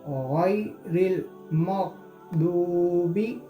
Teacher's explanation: वाव मद को हम एक अलिफ के बराबर खींच के पढ़ना है